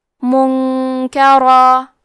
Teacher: کلمت منکرم میں نون ساکن ہے، پھر حرف الکاف ہے، یہاں حکم ہے اخفاء، تو ہم یہ حکم کو غنہ کے ساتھ ادا کریں گے۔ منکرا۔ را پہ تنوین زبر ہے، پھر حرف المیم آتا ہے کلمت من، یہاں حکم ہے ادغام بغنہ، تو ہم یہ حکم کو غنہ اور تشدید کے ساتھ ادا کریں گے۔